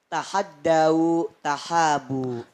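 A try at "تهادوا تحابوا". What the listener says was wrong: Yang benar adalah tahabu, tahadu, tahabu. Jadi hak besar hanya panjang ya tahabu, tahadu, tahabu ya. Jadi H yang besar. Ya, bukan tahadau ya.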